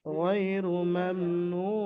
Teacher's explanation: হরফে মাদ্দার পরে আপনি ওয়াফ করছেন নুনের উপরে, সেই জন্য এখানে 3 থেকে 4 আলিফ পরিমাণ টান দিয়ে পড়তে হবে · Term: মাদ্দে আরজি